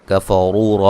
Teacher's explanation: را کو موٹا ادا کریں گے اور یہ واو مدہ ہے